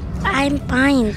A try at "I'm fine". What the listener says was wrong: I'm fine, with an F. Fine. Kagatin mo yung ilalim mo na... Kagatin mo yung labi mo sa baba. Kagat. Fine.